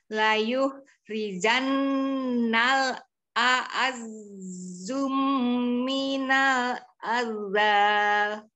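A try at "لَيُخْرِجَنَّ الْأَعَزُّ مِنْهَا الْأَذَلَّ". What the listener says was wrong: Hati, itu zainya tidak bertasdid dengan mim ya. Layuh rijannal a'azzu min hal adal. Azzu, bukan azum. Azzu min. Min hal azal azal. Tidak ditasdid zanya, tidak azal. Azal.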